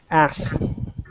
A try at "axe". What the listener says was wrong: Make sure when you pronounce the word axe, you really get the K. Otherwise, it sounds like you're swearing.